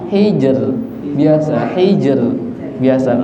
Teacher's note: ro sukun sebelumnya sukun sebelumnya kasrah maka dibaca tipis